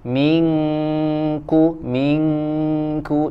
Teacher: ikhfanya dibaca tipis ya karena huruf Kaf dia tipis